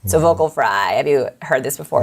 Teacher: it's when your voice sounds like sizzling bacon